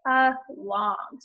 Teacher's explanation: the second syllable long is stressed the unstressed syllable is the a so you say a long stress seeing that second syllable along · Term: schwa